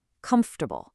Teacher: We do not say comfortable. We compress it into a smooth three-syllable word